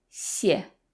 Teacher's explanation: The first xie is fourth tone, so it sounds a little angry, 谢. And the second xie is neutral, so it's very soft and there's no stress on it